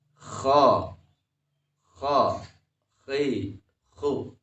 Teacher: huruf ko dari adnal halq atau ujung tenggorokan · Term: makhraj kho